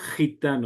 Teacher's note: Es un sonido un poco incluso hecho en la parte posterior de la lengua. Gitano, así como si fuera J, pero es la letra G.